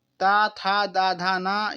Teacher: जिसका उच्चारण ऊपर के दांतों पर जीभ लगाने से होता है उसे कहते हैं दंत